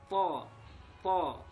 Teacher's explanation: tempat keluarnya di ujung lidah dengan pangkal gigi seri atas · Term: huruf to